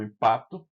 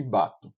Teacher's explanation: a distinção é vista somente pelo vozeamento. O P é surdo, o B é sonoro